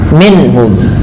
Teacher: Selanjutnya pada lafal minhum sendiri ada bacaan izhar halqi, yaitu dengan memperjelas bunyi suara nunnya ketika bertemu dengan huruf-huruf halq